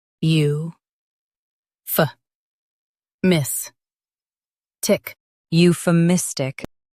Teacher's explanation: Stress miss and keep U soft.